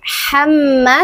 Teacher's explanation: Ha kecil, bukan ha, tapi ha. Makhrajnya ha adalah tengah tenggorokan.